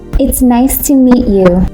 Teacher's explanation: Practice the T sound in meet. A gentle tap will make it sound natural.